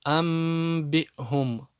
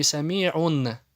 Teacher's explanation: и после него приходит буква б, значит нун будет заменяться на букву мим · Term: Нун заменяется на мим